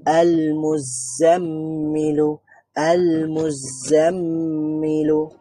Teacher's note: মিমের মধ্যে একটু দেরি করলাম কেন? কারণ এখানে মিম শাদ্দা আছে, তার মানে গুন্না হবে।